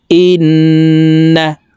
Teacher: তো এখানে হরকতের বামে নুনের উপরে আছে এ কারণে এই হামজা তাসতিদওয়ালা নুনের সাথে নাকের বাঁশি থেকে তিন সেকেন্ড পরিমাণ গুন্নাহ করে ধরে রেখে পড়বো